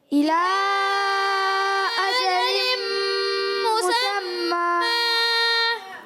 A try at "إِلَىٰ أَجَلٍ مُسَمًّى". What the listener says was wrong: جی پھر آپ سے غنہ چھوٹ گیا ہے. الی اجل مسمى.